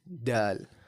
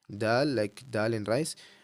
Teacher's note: Very important though, not to be confused with the D in English, because the D in English is pronounced from the alveolar ridge, while the dal in Arabic is pronounced from the top two teeth